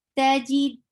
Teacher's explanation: Then dal for fatha, open jaws, and for noon, give gunna. Two haraka gunna here because whenever there is noon or meme with tashdid, you will give two haraka gunna. So you are keeping the sound in your nose.